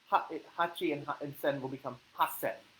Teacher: Hasen would be 8,000 because hachi is 8, sen is 1,000. However, when you combine the two together, hachi and sen will become hasen for specifically 8,000.